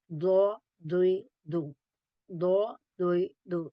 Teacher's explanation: Dod pronounced from the side of the tongue touching the roots of the upper molar. It's mean top, back teeth.